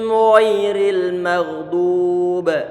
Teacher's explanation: dia punya sifat diantaranya adalah isti'la, berarti terangkat ke atas untuk pangkal lidah dan tebal nanti